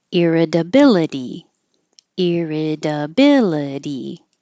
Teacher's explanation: both these T's change to D's